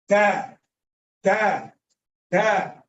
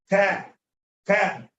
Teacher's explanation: Ta is a letter that comes from the tip of the tongue. With the highest part of the back of the gum line.